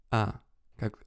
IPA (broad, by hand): ɐ